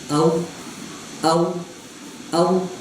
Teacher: हैं कि जो वाव का मखरज है वो ये है कि जब होठों को गोल करते हैं तो इससे वाव अदा होता है।